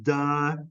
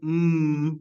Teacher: the difference between sounds like duh which comes out of your mouth and um which comes out of your nose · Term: nasal